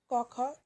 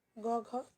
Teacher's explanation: ক খ দুটি অঘোষ গ ঘ ঘোষ